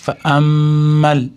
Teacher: Hamzaning ustidagi mim tashdidligi g'unna bilan ushlab turamiz